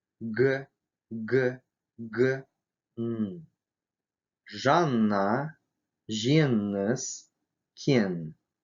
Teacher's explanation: кончик языка опускается к нижним зубам, а задняя часть языка тесно прижимается к заднему небу.